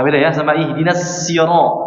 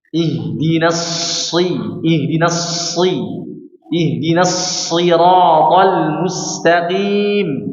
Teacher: Cara pengucapannya huruf shad ini dinaikkan, maka terjadi ketebalan suaranya pada huruf shad.